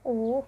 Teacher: tinggi dan lidah lebih menjorok ke belakang